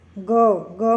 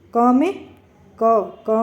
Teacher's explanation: घोष का मतलब होता है एक तरह से कंपन, जिनमें बोलते समय गले में कंपन पैदा हो। ग में गले में कंपन पैदा हो रहा है, क में कम पैदा हो रहा है, तो ये अघोष हो गई और ये घोष हो गई।